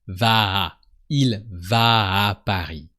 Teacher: we have a long A, but don't forget to make a heavier A at the end.